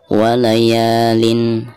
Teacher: Di sini huruf ain ya. Maka cara membaca tanwin yang ada di sini itu harus dijelaskan ya, atau dizahirkan.